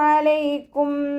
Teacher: അന്റെ മഹറജ് വരുന്നത് വസത്തുൽ ഹൽ ആണ് തൊണ്ടയുടെ മധ്യഭാഗം